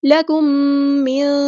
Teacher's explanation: لکم، لام باریک، کاف باریک لائٹ لیٹر ہے. میم ساکن کے بعد میم آیا ہے تو ادغام شفوی ہوگا، ایک الف کے برابر لمبا کریں گے